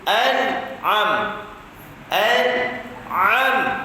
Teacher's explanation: Masuk nun alternatif izhar halqi, sebab depan dia huruf al-halqu, huruf ain. Jadi nun itu tak boleh kita dengung dan tak boleh kita qalqalahkan sebab dia bukan huruf qalqalah.